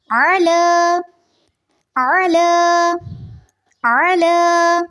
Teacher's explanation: اعلیٰ میں آئین کی آواز واضح ہونی چاہیے، حلق سے اس کو ادا کرنا ہے